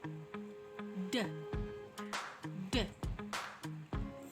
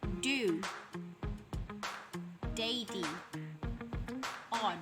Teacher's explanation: voiced stop, made with the tip of the tongue on alveolar ridge